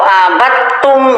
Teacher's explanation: dal sukun masuk ke ta, jangan dibaca dal, abattum. Jadi suara ta yang ada.